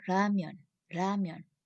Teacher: the pronunciation is between R and L sound.